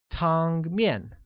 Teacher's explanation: carries a high level tone on the first A and a falling tone on the second